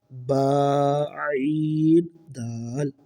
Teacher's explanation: عین کو حلق کے درمیان سے ادا کریں گے